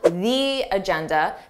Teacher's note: Notice how I have that long E sound, the agenda, because agenda starts with a vowel.